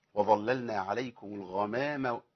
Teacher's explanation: حفص وظللنا ما عندوش تغليظ للام خالص الا في اسم الجلاله